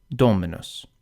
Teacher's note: For these words, the accent falls on the antepenult because the penult is short. Dominus. The second to last syllable, m, is short.